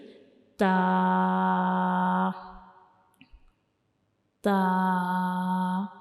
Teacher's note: ता को पढ़ते हुए हमारी जुबान की जो नोक होती है ये टच कर रही होती है हमारे ऊपर वाले सामने वाले दो दांत जो होते हैं उनके अंदर वाली साइड पे जो मसूड़े होते हैं उनको टच कर रही होती है हमारी जुबान की नोक जैसे कि ता ता तो ये ता का मुखारिज है।